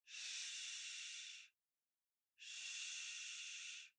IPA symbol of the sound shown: ∫